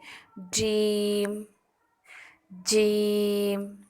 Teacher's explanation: زبان کے درمیان کو درمیان تالو سے لگا کر باریک آواز میں ادا کریں گے